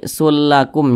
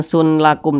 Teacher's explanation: bunyi tanwin ini dimasukkan ke huruf lam melebur melebur ke huruf lam jadi kita baca ini sullakum jangan Sun lakum tapi sulakum langsung · Jangan didengungkan, dibaca pendek saja. Karena ini dia tidak berdengung. · Apanya yang dimasukkan? Bunyi tanwin ini dimasukkan ke huruf lam, melebur ke huruf lam. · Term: Idam bila ganah, idgham bila gunnah